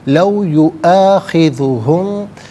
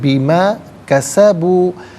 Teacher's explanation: میم ساکن کے بعد با آ رہا ہے تو میم ساکن کو غنے کے ساتھ پڑھیں گے